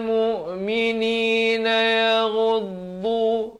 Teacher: Ghain di hujung kerongkong, dha di tepi lidah makhrajnya. Yaghuddu min idhar halqi, jangan panjang.